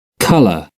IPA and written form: kʌlə (colour)